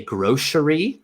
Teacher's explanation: you pronounce it the S sound with sh · So that c becomes like an sh sound.